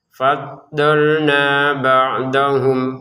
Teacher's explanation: giliran faddolna kita panjangin dua harakat karena ada alif ya. fathah kemudian alif faddolna ba'dahum.